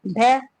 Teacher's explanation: ये स्पष्ट घोष भी है, महाप्राण भी है, ओष्ठ व्यंजन भी है।